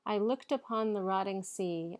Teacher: eight syllables alternating between unstressed and stressed